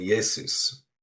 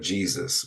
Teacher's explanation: the name would have been pronounced with a sound more akin to the modern English Y. So, that would have been Yesus uh, instead of Jesus, which it just evolved into the J sound.